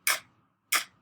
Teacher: Can you feel the back of your tongue, which is back here in the back? Can you feel it lift up? And it's blocking the sound that's coming out. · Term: k sound